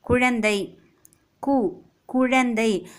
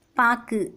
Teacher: சொல்லின் இறுதியில இந்த உகரம் வரும்பொழுது தன்னோட மாத்திரை அளவிலிருந்து குறைந்து அரை மாத்திரை அளவே ஒலிக்கும் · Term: குற்றியல் உகரம்